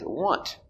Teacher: with want we have the letter a but we don't say ah or ah we say uh